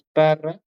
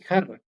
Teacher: Evidentemente la palabra ahí es parra y jarra, porque ahí le cambia el fonema consonante P, que es un oclusivo, por el J, que es ese fonema X, ¿no? Que es fricativo de jarra.